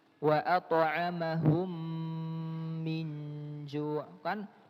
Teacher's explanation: Cara membaca hukum idgham mimi, ya, itu sama persis dengan cara membacanya mim yang bertasydid